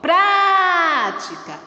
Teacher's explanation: Observou a sílaba pra, como ela se prolongou? Esta é a nossa sílaba tônica.